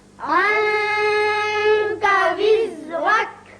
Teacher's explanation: یہاں نون کے بعد کاف حروف اخفا میں سے ہے، یہاں اخفا ہوگا نون پہ اور را کے اوپر زبر ہے، را پر پڑھیں گے۔